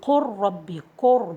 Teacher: So in this case, we're going to merge the lam to the ra, saying قر ربي, قر, because the lam is close to the ra in its articulation point.